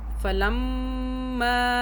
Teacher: میم مشدد پر بھی ہم 2 سیکنڈ کے لیے غنہ کریں گے۔